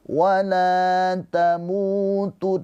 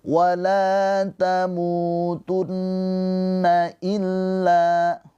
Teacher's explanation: Ya, hati-hati nun yang bertasydid itu gunnah musyaddadah. Gunnah musyaddadah cara bacanya nun yang bertasydid ini ditahan 2 harokat.